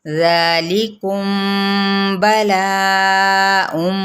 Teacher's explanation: इख्फा करेंगे, मीम की आवाज़ को छुपा लेंगे, ठीक है, और बा को सख्ती से अदा करें। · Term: इख्फा शफवी